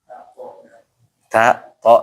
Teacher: Ujung lidah sama pangkal gigi di atas ya.